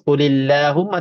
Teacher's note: sebelumnya ada baris bawah. Maka Allah di sini ataupun lam lafz jalalah di sini baca tipis